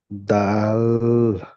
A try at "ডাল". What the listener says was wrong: হচ্ছে না। ডাল। এটা আপনার ভুল হচ্ছে, বুঝতে পেরেছেন? ওই আপনি লটাকে টান করে ফেলছেন, ডাল এমন ভাবে বলছেন, বুঝতে পেরেছেন? লটা একদম টান দেওয়া যাবে না, দাটা টান দিয়ে গিয়ে ল বলতে হবে, দাল।